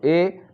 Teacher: ए कंठ तालव्य है अर्ध संवृत है आधा मुंह खुला रहता है आधा मुह बंद होता है